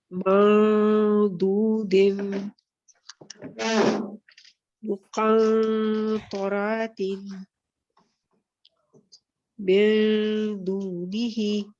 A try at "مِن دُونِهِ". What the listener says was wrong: آپ کے پھر وہ سیکنڈ دال کے مخرج پہ جیسے من دونی میں دال پہ جا رہا تھا.